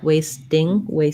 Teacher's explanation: So we have this letter A says the A diphthong, first syllable stress, wasting, and then we do say a T for ST blends, but we don't have a lot of air coming out, so you might think of it a little bit like a flap, like wasting, little light D sound. As long as you don't say wasting, you're naturally not going to have a lot of air coming out for that one.